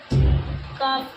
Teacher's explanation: کاف کا مخرج اقصائے لسان یعنی زبان کی جر سے کچھ اوپر کا حصہ اور اس کے مقابل اوپر کا تالو